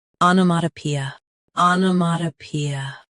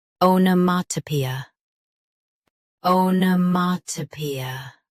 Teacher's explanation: US starts with ah ah. UK starts with oh.